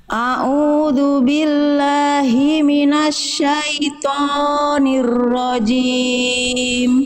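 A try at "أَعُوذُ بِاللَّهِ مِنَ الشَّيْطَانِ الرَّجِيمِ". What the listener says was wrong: Oke, Jangan sampai dia ditebalkan tapi tonya jadi kepanjangan. 2 harokat Bunda. Kayak yang awal kadar panjang tonya. A'udzu billahi minasyaitonir rajim.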